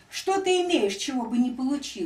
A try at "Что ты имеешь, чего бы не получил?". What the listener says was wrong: Это ударение-то не там. Это ударение показывает, что ты не понимаешь, о чем считаешь. А нужно просто... Вот то, что ты имеешь, это разве то, что ты не получил?